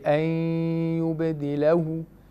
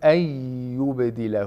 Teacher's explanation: He doesn't say أَن يُبَدِلَهُ. He says أَن يُبَدِلَهُ without the ghunna on the ya mushaddad. In the riwayah of Khalaf and Hamza and the qira'ah of Hamza, whenever a Nun Sakina merges into either Waw or the letter Ya, you should not apply Ghunna. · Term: Idgham Bila Ghunna